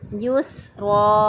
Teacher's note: را کو پر پڑھیں گے کیونکہ را کے اوپر زبر ہے